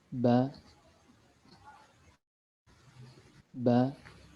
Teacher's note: huruf ba keluar dari tempat pertemuan antara bibir bawah dengan bibir atas dan kondisi lidah dalam keadaan normal